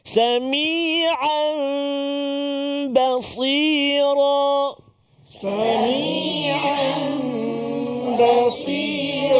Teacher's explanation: Iqlab. Nun mati atau tanwin bertemu dengan ba, satu huruf saja, nama dia iqlab, dengung dua harakat.